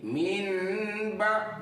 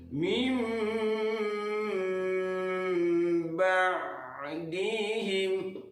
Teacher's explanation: Jadi nun itu ditukar menjadi mim dengan berdengung. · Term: iqlab